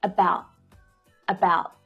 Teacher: at the end you'll hear a stop T about about so I don't fully release the air after that T to make a complete T sound